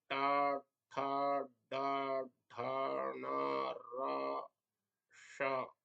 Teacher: ट ठ ड ढ ण र और श का उच्चारण मूर्धा स्थान अर्थात तालु के ऊपर से करना चाहिए। तो इनमें जो है तालु के ऊपर जो मूर्धा स्थान होता है वहां पर जीभ का अग्रभाग लगता है, स्पर्श करता है, और उसके स्पर्श से इन मूर्धन्य वर्णों का उच्चारण होता है।